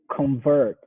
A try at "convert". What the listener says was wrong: Convert. Now, I wouldn't say the O like a proper O. I would say like convert. Convert. And the T, we're not going to pronounce it in American English. Convert.